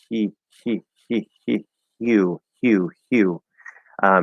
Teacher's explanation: Like we're going to say ye, right? But instead of having that voice come through for a Y sound, we're just going to start with the breath. That's it. You're just doing a voiceless Y. · I call the H the voiceless vowel consonant, because it usually just takes the position of the vowel sound that's after it, but with no voice. It's just breath.